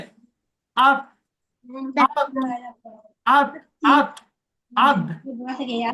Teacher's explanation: জিভের আগা এবং সামনের উপরের দুই দাঁতের গোড়ার সাথে লেগে উচ্চারণ হয়